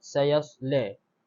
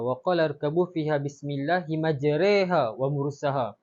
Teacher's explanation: Seterusnya ialah bab imalah. Imalah ni juga dikenali sebagai imalah kubra, iaitu sesuatu bunyi yang terhampir sekali dengan kasrah.